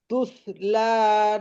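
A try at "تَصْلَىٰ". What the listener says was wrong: তাস তাসলা, তুসলা নয়। আচ্ছা, এই তুস কটা একটু টান হবে।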